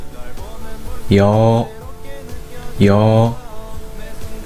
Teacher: 사랑▁노래▁가사가▁들려다▁왜▁이래▁내▁플레이리스트에▁맞지도▁않게▁설렘▁가득해▁힘을▁걸어用国际音标学习韩国文字▁Lesson▁2。上次你们学了八个单元音▁E▁A▁O▁A▁A▁U▁U▁U▁这次要学习十三个双元音，有三个组，▁Y▁组是以▁Y▁发音开始的，呀哟耶耶▁u▁u，▁W▁组是以▁W▁发音开始的，▁V▁哇我喂喂，也有其他▁V▁e。第一呀，名称也是呀，首先写一个长的竖画，然后写两个横画，呀呀▁，Y▁声音和啊联合成为一个声音，如拼音呀一样发音，呀呀，共三画。第二，有，首先写两个横画，然后写个长的竖画。有有▁， Y▁声音和▁O▁联合成为一个声音